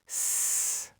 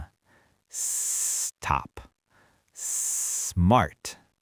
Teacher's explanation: You don't try to say the whole cluster at once. You start the S sound early and you hold it for a second to let your mouth prepare for the next consonant. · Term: S clusters